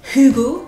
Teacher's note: Enfin, il y aura un H expiré. On dit un H aspiré d'ailleurs.